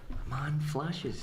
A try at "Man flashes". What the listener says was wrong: Man flashes. I want to get across to you that there's an intonation. It's not man flashes, as in a man flashing. It's man flashes. It could be all one word.